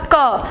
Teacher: तो इस क में अ की ध्वनि शामिल है